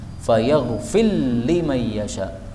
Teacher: ini ra-nya boleh idgham pada lam